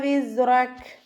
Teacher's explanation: കൽക്കലയുടെ letter അല്ലല്ലോ, half സുക്കൂന് കൊടുക്കുക. റോ ഫത്തഹ ആയതുകൊണ്ട് നമ്മൾ ഉയർത്തിയിട്ട് ഉച്ചരിക്കുക. കാഫിന് സുക്കൂനിട്ട് നിർത്തി കൊടുക്കുമ്പോൾ കുറച്ച് എയർ പുറത്തോട്ട് പോണ സൗണ്ടിൽ നിർത്തി കൊടുക്കുക കേട്ടോ.